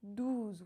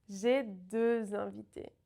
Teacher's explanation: Douze makes the sound OU rounded, and deux is the E sound